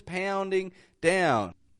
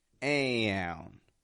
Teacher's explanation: Still stretching out all of those aown sort of sounds. That diphthong before the N.